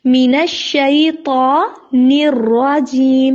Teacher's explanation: آگے ہے موٹا حرف جو کہ ہے طا، تو اس کو موٹا پڑھنا، مین الشیطان نہیں پڑھنا.